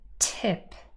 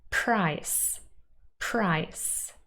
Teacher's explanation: Well, you can watch my full video on it, but just very quickly, it means that there's a little puff of air, like a little p, like t, p. You can hear a little puff of air accompanying the sound, tip. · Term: aspirated